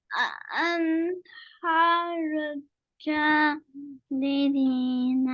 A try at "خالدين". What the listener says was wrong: Jalidina. This is Jim.